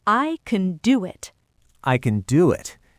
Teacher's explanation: It is not the main verb. The main verb is do, so do gets the stress, and can gets reduced to a schwa. It sounds like can.